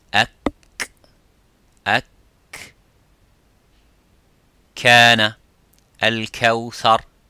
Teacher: the kaf touches the roof of the mouth, a little bit touches the bone of the roof of the mouth